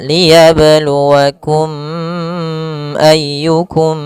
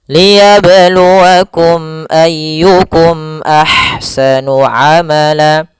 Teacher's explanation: Sehingga kita membacanya adalah mim itu makhrajnya daripada bibir kita. Sehingga suara mimnya harus jelas dan tidak boleh ditahan, tidak boleh dibaca liyabluwakum ayyukum, enggak. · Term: izhar syafawi